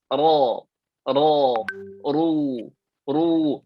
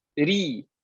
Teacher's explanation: Ra bila baris atas atau baris depan, sebutannya jadi tebal. Tapi kalau ra baris bawah, sebutannya jadi tipis. Ri. Ada senyuman, kayaknya ada senyuman gitu.